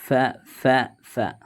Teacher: താഴെ ചുണ്ടും മേലെ മുൻപല്ലുകളുടെ തലയും